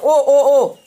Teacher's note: कंठोष्ठ यानी कंठ और ओष्ठ के माध्यम से जो बोलते हैं उसको कंठोष्ठ कहा जाता है